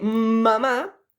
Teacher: nosotros cortamos la salida del aire por la boca y sale por la nariz el sonido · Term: sonido nasal